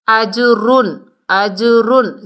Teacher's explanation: را کے اوپر دو پیش ہے تو آگے حروف حلقی میں سے غین آ رہا ہے تو تنوین کو ہم نے ظاہر کر کے پڑھنا ہے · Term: اظہار حلقی